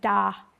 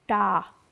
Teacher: one is a dental d and one is a retroflex D. And that's as important of a difference in Hindi as ba da is in English.